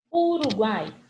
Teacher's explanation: eu tenho três vogais juntas na mesma sílaba